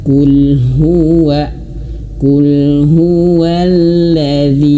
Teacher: huruf lam ini dia memiliki sifat tawassud, mengalir sedikit